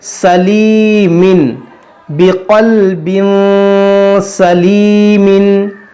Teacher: تنوین کے بعد یہاں پر سین ہے, یہاں پر اخفا ہوگا, گنہ ہوگا.